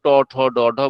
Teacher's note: ট ঠ ড ঢ মূর্ধন্যের সময় শ্বাসবায়ু মূর্ধা, মূর্ধা বলতে তালুর পিছনের অংশ, সেখানে স্পর্শ করে।